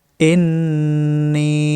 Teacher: নুন অক্ষরে ওয়াজিব গুন্না এক আলিফ পরিমাণ টানতে হবে এবং নি এক আলিফ পরিমাণ টানতে হবে জেরের বামে ইয়া সাকিন